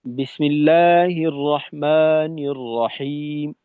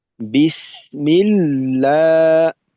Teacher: সিন যতটুক সময় পাবে লামও ততটুকুই সময় পাবে